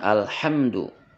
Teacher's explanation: makhrajnya adalah di wasul halqi Tengah tenggorokan